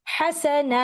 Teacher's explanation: ह सा इनका एक जितना वक्त है और ना उसको हम दो हरकत दे रहे हैं। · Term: मद लेटर की टाइमिंग